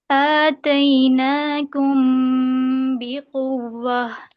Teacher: پورا میم نہیں ادا کرنا، چھپائیں اس کی آواز کو